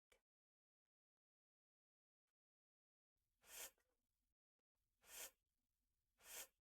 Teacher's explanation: the upper teeth are in contact with the lower lip